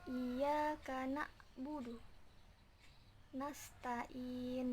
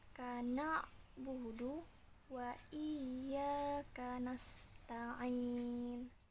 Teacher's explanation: harusnya lebih ditenggorokan dengan membacanya menggunakan huruf ain